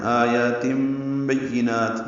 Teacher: تنوین کے بعد با آنے کی وجہ سے اقلاب ہو رہا ہے، تن کو تم پڑھ رہے ہیں